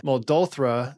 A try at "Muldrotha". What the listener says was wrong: Muldrotha. You missed the R.